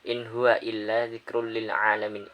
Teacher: In huwa itu terdapat izhar halqi sebab ada nun sukun menghadapi huruf ha.